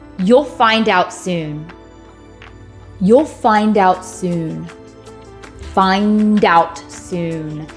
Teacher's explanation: we're going to break up that final consonant cluster so that the final consonant in that cluster is moved on over to the word or syllable that begins in a vowel